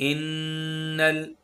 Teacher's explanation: ज़बान को सख्ती के साथ तालु के साथ टच करेंगे तो ये गुन्ना की साउंड है।